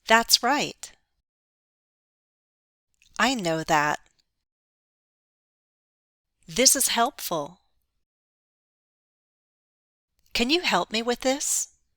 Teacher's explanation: we don't reduce the vowel sounds in the demonstrative pronouns this and that.